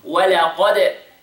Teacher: the قاف is heavy, the دال قلقلة.